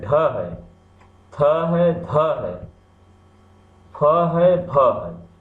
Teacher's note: देखिए इनको एक उच्चारण में अधिक श्रम करना पड़ रहा है और मुख से हवा भी अधिक मात्रा में निकल रही है। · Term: महाप्राण